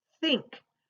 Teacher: my tongue is between my teeth when I say think